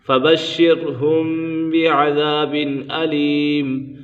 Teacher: فَبَشِّرْهُم بِعَذَابٍ أَلِيمٍ، یہاں پر اخفاء شفوی کا قاعدہ لگ رہا ہے، کیونکہ میم ساکن کے بعد حرف با آ جائے تو میم ساکن میں اخفاء شفوی ہوگا، یعنی غنہ کر کے پڑھیں گے